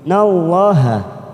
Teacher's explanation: karena didahului fathah pada huruf nun maka kita baca tafkhim